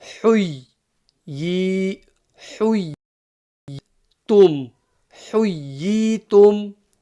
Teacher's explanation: the ha should come crisp from the middle of the throat.